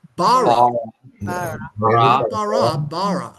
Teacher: So notice we have the accent at the beginning.